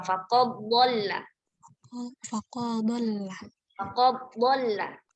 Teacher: Faqad dhalla ketika dibaca idgham berarti dileburkan ke huruf yang kedua